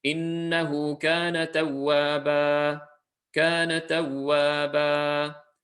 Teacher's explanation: Both to two lengths long, and despite the fact that it's at the end of an ayah, there should be no extra elongation there. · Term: mad al-iwad